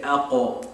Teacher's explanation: qaf is from the furthest back point on the tongue, almost kind of the throat, and it's from the soft palate